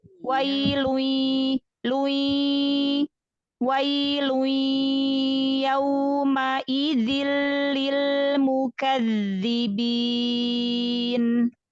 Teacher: Langsung masuk, alirkan ke hidung suaranya. Ya, jadi jangan ada jeda walaupun sedikit. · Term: idgham